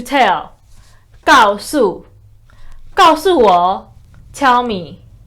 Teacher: they are both fourth tone, very harsh